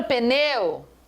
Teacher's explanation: o E é forte, o U é fraco. O U vai ser uma semivogal, também tem um ditongo.